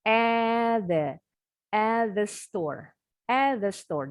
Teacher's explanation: T yang ini bunyinya mendekati ke bunyi TH-nya yang seperti bunyi huruf D.